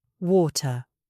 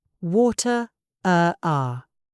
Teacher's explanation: British English is non-rhotic. We do not pronounce the R at the end of words.